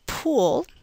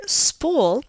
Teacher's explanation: when you say pull you should be able to feel a small puff of air immediately after the p this is aspiration and we transcribe it using a superscript h the word Spool